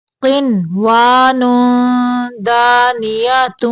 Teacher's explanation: یہاں پہ نون پہ اظہار مطلق کا قاعدہ ہے، نون کو صرف ظاہر کریں گے